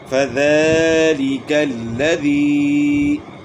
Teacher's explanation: زال کے اوپر کھڑا زبر ہے، اس کو تھوڑا کھینچیں گے، کھڑا زبر الف مدہ کی آواز دیتا ہے